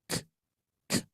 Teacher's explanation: untuk pengucapan kaf ketika sukun itu syiddah dulu, baru hams ya. Jadi baru sisa udaranya, sisa suaranya gitu ya. Jadi sehingga nanti bunyinya k, k.